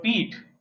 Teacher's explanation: the soft palate is raised and air passes only through our oral cavity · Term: oral sound